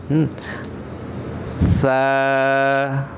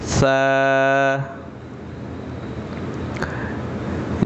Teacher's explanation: এটা বলার সময় একটু খেয়াল করতে হবে যে জিহ্বার আগাটা সামনের উপরের দুই দাঁতের আগার সাথে লাগবে